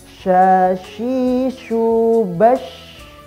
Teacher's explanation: Huruf shin di sini memiliki tempat yang sama dengan huruf jim, kemudian dengan huruf ya. Adapun pengucapan huruf shin ini lebih kuat hembusan ataupun hamburan nafasnya